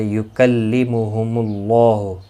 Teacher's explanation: یکلمہم اللہ، کسی بھی حرکت والے حرف کو کھینچنا نہیں، اللہ کا لام پیش کی وجہ سے پر پڑھا جائے گا۔ اس کے اوپر کھڑی زبر بھی ہے، ایک الف کی مقدار کے برابر کھینچ کر پڑھیں گے۔